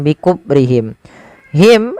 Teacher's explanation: him ada bacaan syafawi dengan jelas mimnya